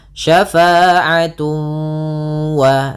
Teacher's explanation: Cara membacanya ditahan suara wawnya. Syafa'atun wa sambil dimasukkan ke rongga hidung. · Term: idgham bi gunnah